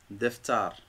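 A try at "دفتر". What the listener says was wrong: Deftar. On n'oublie pas de rouler le R.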